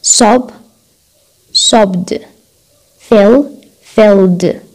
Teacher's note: لأنه هذا voiced وهذا voiced، فلفظنا صوت D D